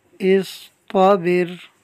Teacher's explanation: صاد اور طا حروف مستعلیہ میں سے ہیں، ان کو ہم پر پڑھیں گے اور را ساکن سے پہلے با کے نیچے زیر ہے تو اس کو باریک رکھیں گے۔